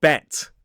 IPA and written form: bet (bet)